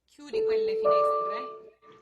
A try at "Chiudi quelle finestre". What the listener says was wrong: Don't chew the D. Chiudi quelle. Get chiudi. Let yourself just roll over that D instead of pronounce the D.